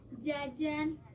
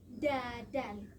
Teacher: di sini ada perubahan fonem yang asalnya dari J menjadi ke D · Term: asimilasi